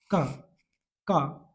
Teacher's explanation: है का का कैसा है का को बोलते हैं हम कंठ क्योंकि जब हम का बोलते है ना तो आवाज मेरी कंठ से आती है